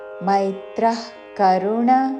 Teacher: విసర్గ తర్వాత క తో పదము మొదలవుతున్నది కాబట్టి నాభి నుండి శ్వాస వదిలి చివరిన ఖ లాగా ఉచ్చారణ